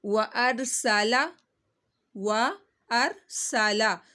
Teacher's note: سین کی سیٹی نکالنی ہے